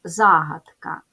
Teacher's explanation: ставимо наголос загадка падає на перший склад